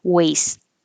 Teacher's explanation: waste on your body is the same waste and you don't hear the final T